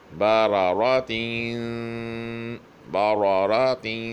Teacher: با پتلی ہے اور دونوں را زبر والے ہیں، اس لیے دونوں موٹے پڑھے جائیں گے